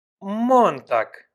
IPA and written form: ˈmɔntaːk (Montag)